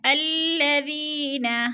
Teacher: الذین، ذی پہ یا مدہ ہے، یا مدہ کو ہم نے ایک الف دو حرکات کے برابر کھینچ کر پڑھنا ہے